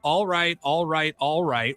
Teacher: the first syllable of the first two words is at a lower pitch than the second syllable